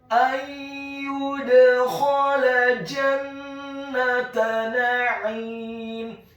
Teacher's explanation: Huruf dal-nya dibaca sukun dan wajib untuk diqalqalahkan atau dipantulkan.